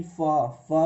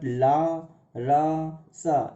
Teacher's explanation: फा फा बोलने पर हमारे ओठ जो हैं वो क्या होते हैं, आपस में मिल जाते हैं। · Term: ओष्ठ ध्वनि